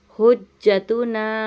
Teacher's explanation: यहाँ पे जीम पे हम जमाव करेंगे और इसको 3 अलिफ की मिकदार खींचेंगे